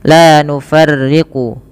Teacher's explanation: Pada lafal la nufarriqu yang dimana la nufarriqu yang ra-nya itu dibaca dengan tipis ketika ri